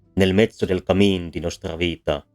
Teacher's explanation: the opening line of the divine comedy and in this case we see that the stressed syllables are overwhelmingly longer than the non-syllables this is the case in every words and